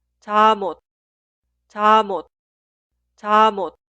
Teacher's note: La consonante final 미음 se traslada al lugar de i응 en la pronunciación. Por eso suena 잠옷, 잠옷, 잠옷.